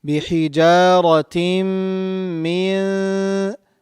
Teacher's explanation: we'll be hiding the pronunciation of noon, and we will have 2 harakat long gunna. Bihijaratim min, not min. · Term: ikhfa